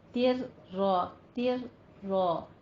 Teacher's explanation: فَهُوَ فِي عِيشَةٍ رَاضِيَةٍ تر را تھوڑا سا آپ نے رک کے پھر آگے چلنا ہے کیونکہ را مشدد ہے، ٹھیک ہے، را کے پر تشدید ہے، لیکن تن نہیں کہنا ہے، تر کہنا ہے کیونکہ یہاں پہ ہمارا ہے ادغام بلا غنہ